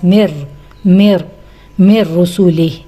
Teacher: नून साकिन के बाद र आ गया है। ये फिर वही इदगाम विदाउट गु्ना का रूल है। लिहाजा हम यहां पर नून को बगैर आवाज़ के इसको नहीं बीच में हम बोलेंगे।